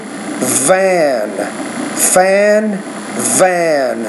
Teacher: so that V you need to produce that with a little bit more vibration